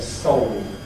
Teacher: increasingly it's clear people have a rather backer, old-type allophone here